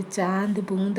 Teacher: अनुनासिक ध्वनियों के उच्चारण में हवा नाक और मुंह दोनों से निकलती है